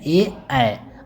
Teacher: कंठ और तारु जब दोनों मिलकर के जिसका उच्चारण होता है